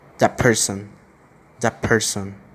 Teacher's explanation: We see that the t sound is adopting the p sound.